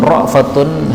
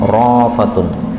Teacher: Kemudian ra'fatun, hamzahnya dihilangkan rafatun